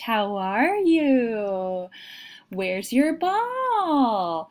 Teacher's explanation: complex sentences less technical vocabulary this also is almost Universal that people talk to babies and young children with that higher pitch